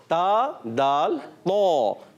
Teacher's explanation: اور تا دال طا، زبان کا سرا، وہی اوپر کے دانت ان کی جڑوں میں جب زبان کا سرا لگتا ہے تو تا دال طا ادا ہوتے ہیں